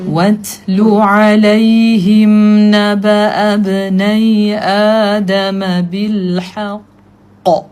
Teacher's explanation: When you pronouncing the letter ta with sukun there is a sound that we call it whispering sound of the ta. So make sure you put the tip of the tongue is behind upper incisors.